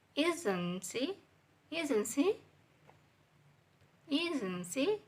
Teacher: And she is flat level, and isn't is high level, and she is low level. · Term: falling intonation